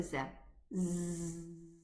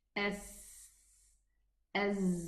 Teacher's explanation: There is vibration with the Z because it has Jahr. And the Sin has Hams, there is no vocal cord vibration.